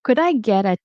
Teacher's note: the T is going to turn into a D sound